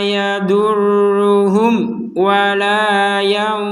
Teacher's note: mim mati bertemu wau maka kita membacanya dengan jelas